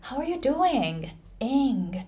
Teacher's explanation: Ing is the final syllable in the final word, and that is pronounced really long at the end